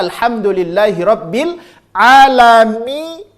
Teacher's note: Mimnya masuk ke hidung, iya-nya enggak boleh masuk ke hidung. Maka alhamdulillahirabbil alamin, mi masuk ke hidung, setelahnya kembalikan lagi ke makhraj al-jauf.